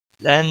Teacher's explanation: نون مشدد پر غنہ ہوگا